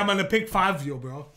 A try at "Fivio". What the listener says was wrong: There's no A. Fivio, man.